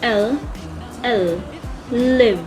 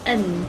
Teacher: The tip of the tongue touches the upper part of your mouth, which is what we call the alveolar ridge.